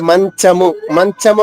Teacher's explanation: మంచము అన్నప్పుడు నాలిక మధ్యభాగం పైన టచ్ అవుతుంది